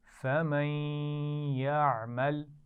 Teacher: ان دونوں الفاظ کو ہم ملائیں گے بھی لیکن غنہ بھی ہوگا. فَمَن يَعْمَلْ.